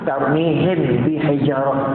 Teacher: Ikhfa syafawi. Buka sikit bibir mulut.